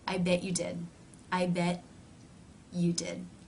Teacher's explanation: rather than releasing air through the teeth the mouth simply moves in to the next sound